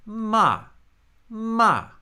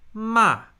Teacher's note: So if my first tone is ma ma, I need to begin my fourth tone on that same pitch. But just as I begin it, just as I start speaking, the pitch is going to fall. · The fourth tone actually begins where the first tone lives.